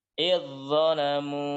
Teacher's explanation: zalnya masuk ke huruf dha